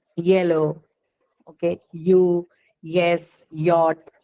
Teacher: This is again a palatal sound and it's an approximate. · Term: y sound